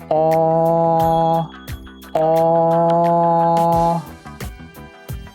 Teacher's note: The aw, or backward C, is a mid-back vowel with rounded lips. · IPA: /ɔ/